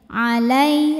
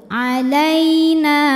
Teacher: maka dibacanya cukup dilembutkan atau dilunakkan. Jadi tidak perlu dipanjangin ya. Alai lembut, alaina.